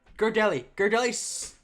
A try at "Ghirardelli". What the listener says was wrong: You were saying it so weirdly. It's Ghirardelli. You're saying it like your throat. You're like Ghir.